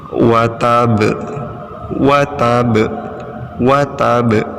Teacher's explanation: Ba-nya dipantulkan ya karena dibaca sukun atau mati. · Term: Qalqalah, qalqalah